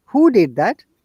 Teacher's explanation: our tone must go upper you know intonation or rising intonation it should sound like a question